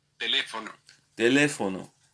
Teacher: the accent is on the second syllable where you have the accent already shown on the letter over the letter E.